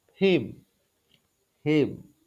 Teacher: Itu H-nya tidak diucapkan atau dia seperti tidak terdengar. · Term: elisi